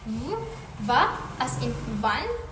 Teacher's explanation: similar to fa, but with vocal cord vibration, creating a voiced fricative.